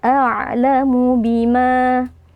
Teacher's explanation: Huruf ain berikan sifat bainiyah, yaitu ada sedikit aliran suara, jangan langsung kita putuskan a'lamu, tapi harus alirkan sedikit.